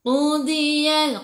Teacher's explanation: tepi lidah menyentuh gigi geraham atas